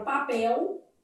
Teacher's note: elas consideram que esse L pode ser lido com som de U. Então, uma banca assim, ó, ela vai pegar a palavra papel e ela vai entender que nesse finalzinho aqui, ó, para essas bancas elas vão entender que há um ditongo fonético. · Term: vocalização da letra L